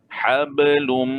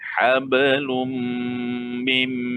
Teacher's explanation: Ini dah dia idgham al-gunnah. Hablum, bibir rapat. Jangan tekan. Rapat je. Hablum, beza rapat dengan tekan.